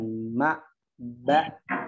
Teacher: Ya mim makhrajnya di kedua bibir, begitu kan? Di kedua bibir dirapatkan